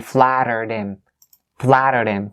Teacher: the ED part here in this word is pronounced as a D sound. So that's why you link it.